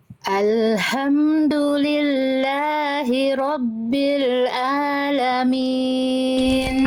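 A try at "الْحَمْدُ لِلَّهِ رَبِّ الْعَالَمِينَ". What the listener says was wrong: ainnya kuatkan lagi bunda rabbil alamin alamin a dari tengahtenggorokan sama kayak H kecil Bunda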